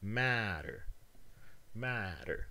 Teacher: a syllable where it does not get stress this one is a troche which has a first a strong syllable first and then a weak one second · here the alveolar sound is in a syllable where it does not get stress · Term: tap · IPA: [ˈmæ.ɾəɹ]